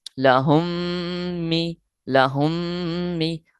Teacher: غور فرمائیں، سب سے پہلے ہے میم ساکن کا قاعدہ کہ میم ساکن کے فوراً بعد دوسری میم آ گئی ہے لہٰذا یہاں ہم نے کرنا ہے ادغام شفوی